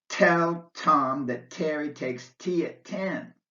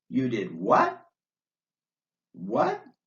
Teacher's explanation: your tongue touches the bony Ridge behind your upper teeth to make the T sound but there's no puff of air at the end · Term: non aspirated T